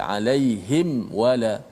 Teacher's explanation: supaya mim tu tak bunyi ikhfa, dia bunyi izhar, jelas mati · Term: izhar syafawi